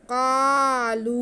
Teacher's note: قالو، دونوں آوازیں کھینچی جائیں گی کیونکہ مدہ حروف کے ساتھ آ رہی ہیں